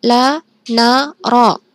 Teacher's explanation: Selanjutnya ada huruf lam, nun, dan ro. Mereka keluar dari ujung lidah yang ditempatkan pada langit-langit mulut. Mulut atas, ya.